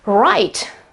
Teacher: The W at the beginning disappears.